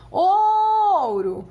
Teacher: qual que é a vogal? O O, porque ele soa bem alto, bem forte. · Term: semivogal